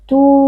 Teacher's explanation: karena ada waw sukun yang sebelumnya berharokat dhammah, dibaca panjang dua harokat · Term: mat tabi'i